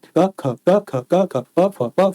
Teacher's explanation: खा को बोलने में ज्यादा वायु भर आती है। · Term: महाप्राण